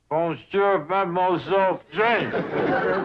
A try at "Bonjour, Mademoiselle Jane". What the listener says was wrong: That's very good, except for the mwah sound. It must be soft. Mwah. Watch my lips closely. Mwah.